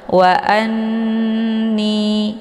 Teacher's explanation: didengungkan, yaitu hamzahnya ditekan, kemudian ditahan suaranya 2 harokat sambil dileburkan suara ke dalam huruf nun. Wa anni, ya, jangan langsung dilepas, ya, ditekan kemudian ditahan. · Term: ghunnah musyaddadah